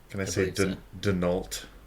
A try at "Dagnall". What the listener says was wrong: Dag. It's not a silent G, but it is emphasis on the first syllable.